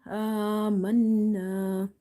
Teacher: alif fatha na, amanna. Hold the sound of nun in order to do nasalization.